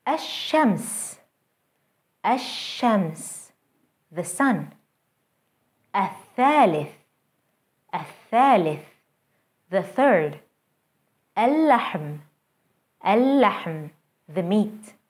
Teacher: notice how the Sun letter is doubled and how the L Sound is lost